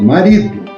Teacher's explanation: Então, o ri é a sílaba forte.